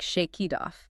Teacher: That K sound links right into it, and the T in it links right into off. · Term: linking